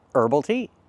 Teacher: Herbs, herby, or herbal tea don't pronounce the H.